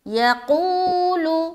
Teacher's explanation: یقول، یا زبر یا، قاف واو پیش قو، لام پیش لو، یقول، قو میں کھینچیں گے، واو مدہ ہو رہا ہے، یا اور لو کو جل پڑھیں گے۔